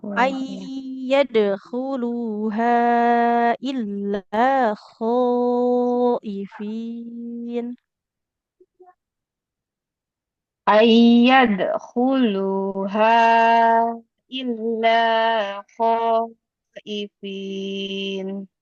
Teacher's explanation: huruf dalnya qalqalah. Nah, jangan lupa dipantulkan.